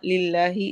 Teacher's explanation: इसमें जलाला को बारीक पढ़ेंगे